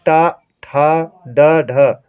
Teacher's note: तो जब हमारी जिह्वा खूब ज़्यादा मुड़ती है, देखिए अगर ये हमारी जिह्वा इतना मुड़ जाए, इतना मुड़ जाए तब होता है मूर्धन्य। और टा का उच्चारण करिए, देखिए आपकी जिह्वा खूब पीछे जा रही होगी, है ना। टा, तो वो है आपका मूर्धा।